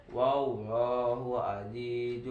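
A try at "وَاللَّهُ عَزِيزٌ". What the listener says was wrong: Azizun itu ada sopir ya, jadi ada desisnya. Bukan aji. Azi. Zai. Bisa nggak bilang zai? Z. Z. Azi.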